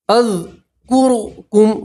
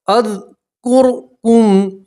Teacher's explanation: را سکین سے پہلے پیش ہے تو را کو موٹا پڑھیں گے